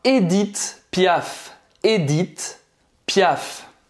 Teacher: Edith Piaf. Edith, então esse primeiro E, ele é fechado, tá? Não é Edith, é Edith.